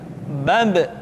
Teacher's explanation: ketika mati maka terdengar suara pantulan